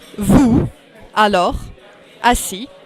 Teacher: you have an S in the end, but you don't pronounce it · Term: silent letters